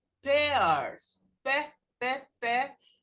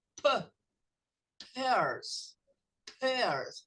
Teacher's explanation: É só o som do P que explode nos lábios.